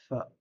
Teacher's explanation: Le deuxième point de sortie des lèvres, c'est les les incisives supérieures avec la lèvre inférieure